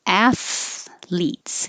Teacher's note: You have to pull your tongue back in from the TH to make an L.